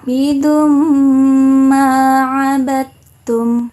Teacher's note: Jadi dikenai hukum bacaan idgham bi ghunnah. Cara membacanya, huruf dalnya melebur ke huruf mim diikuti dengan dengung.